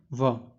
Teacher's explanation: जिन्हें बोलने में दांत और ओष्ठ दोनों की भागीदारी हो, उन्हें हम क्या कहते हैं, दंतोष्ठ व्यंजन